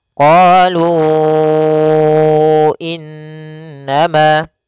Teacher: Awalnya lu panjangnya 2 harokat, karena datang setelahnya hamzah maka dia berubah menjadi 4 harokat dalam riwayat Imam Hafiz an Asim, atau dalam Imam Asim ada yang mengatakan 5. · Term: mad jaiz munfasil